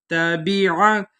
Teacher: فمن تبع، تا نقطے والی ہے، اس کو باریک پڑھیں گے، باقی نیچے زیر ہے، عین کے اوپر زبر ہے، عین حروف حلقی میں سے ہے، اس کو وسط حلق سے ادا کریں گے